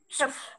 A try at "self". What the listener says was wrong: Con đặt răng lên cái môi con nha. Đẩy hơi ra. Đừng cắn mạnh quá. Cắn vào môi đấy. Nhẹ thôi, đặt lên nhẹ thôi.